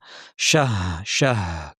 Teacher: হা উচ্চারণের সময় খেয়াল করবেন যেন শুধুই বাতাস হয়ে না যায়, হায়ের আওয়াজটা যেন শোনা যায়। অনেকে শাহ বলে ফেলেন, শাহ এভাবে না, শাহ শাহ খেয়াল করে।